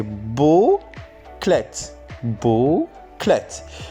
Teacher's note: L gets devoiced when following a syllable initial voiceless stop.